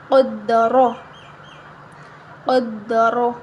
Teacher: اب را کے اوپر زبر آ رہی ہے تو ہم را کو موٹا پڑھیں گے، قاف کو بھی موٹا پڑھیں گے